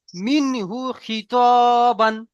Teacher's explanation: নুন সাকিনের পরে হুরুফে হালকি 6টি অক্ষরের মধ্যে হা এসেছে, তাই নুন সাকিনের পড়াকে বিনা গুণনায় জাহির করে তাড়াতাড়ি পড়তে হবে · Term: ইজরা